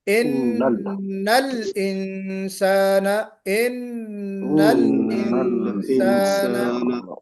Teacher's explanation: ہاں اب دیکھیے یہاں پہ لام پر قلقلہ ہو گیا، ان الانسان، ان الانسان ایسا نہیں ہونا چاہیے، لام پہ آواز بالکل آپ کی ٹھہر جانی چاہیے